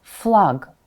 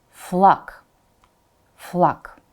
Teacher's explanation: it's at the end of the word, so g becomes k